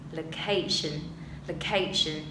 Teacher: Những nguyên âm mà không nhấn trọng âm nhé, thì chúng ta đã thêm một dấu huyền vào, thì tự dưng giọng mình nó sẽ đi xuống. Và những âm mà cần nhấn trọng âm thì mình đọc rõ ra, cao ra, dài hơn một chút.